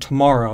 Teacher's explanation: the accented part of that word is longer it's a little bit louder and it has a higher pitch than the other bits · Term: stress accent